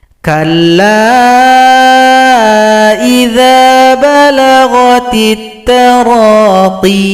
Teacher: Kemudian di sini kalau kita berhenti, huruf ya disukunkan, kemudian huruf qaf yang berada sebelumnya dipanjangkan 2 ketukan